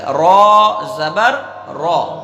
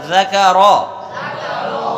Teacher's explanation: را پر زبر ہے تو را کو کیا پڑھیں گے؟ پر پڑھیں گے، یعنی موٹا کر کے پڑھیں گے